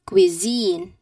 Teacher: The long e sound should be at the second syllable.